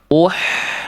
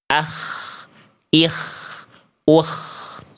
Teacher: Jadi bunyinya lembut ya, kayak berbisik. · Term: H kecil